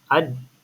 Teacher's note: Da bukan dekat sisi. Da dekat hujung lidah. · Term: huruf da